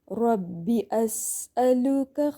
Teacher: سین میں سٹی آئے گی، سین میں بھی ہمس ہے